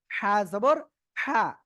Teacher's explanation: হা জবর হা এই যে গলাটা চিকুন করে উচ্চারণ করতে হবে গলাটা কি চেপে ধরে হালকা উচ্চারণ করতে হবে হালকা বাতাস বের হবে